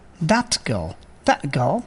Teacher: if any word ends with t sound and the next word begins with k or g sound, then the last sound of the first one, that is t, will be pronounced as k.